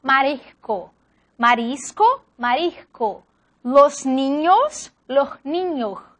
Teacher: la S aspirada, representada por H